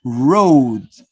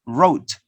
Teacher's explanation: the vowel sound is longer before da than before ta